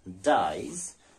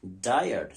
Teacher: So there is a diphthong in dyes and a trithong in diet.